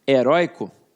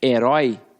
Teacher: principalmente a palavra heróico porque heroico perde mas herói não perde heróico é paroxítona herói é oxítona